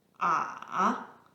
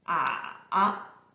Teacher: This is a little complicated as it goes descending first, followed by ascending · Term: The third one